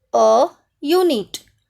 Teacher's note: A is used before the words beginning with vowels if we hear a Y sound, like a unit. Here, U is the vowel, but we can hear the sound Y. So, before that word, we have to use A.